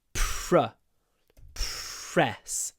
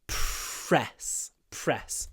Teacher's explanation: when you have a p r we aspirate the p a lot